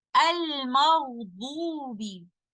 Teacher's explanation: I should imprison the running of the breath with letter ghain. Since they are coming from the same makhraj, from the top of the throat, if I add running of the breath with letter ghain, it will sound more like letter kha or something in the middle, but not a pure ghain.